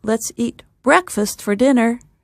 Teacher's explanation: the two words that get extra stress are breakfast and the second dinner